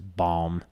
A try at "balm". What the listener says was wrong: You pronounce the L's and everything and it freaks me out. Yeah, bomb.